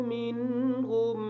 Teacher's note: منہم کی جو نون ہے اس نون ساکن کا غنہ ہم نہیں کریں گے کیونکہ اس نون ساکن کے بعد حروف حلقی میں سے ہا آ گیا ہے